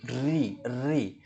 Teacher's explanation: जीभ जो जीभ है वो ऊपर के तालू से टकरा कर एक कंपन करती है ना? जीभ को मोड़ मोड़ती है। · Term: मूर्धन्य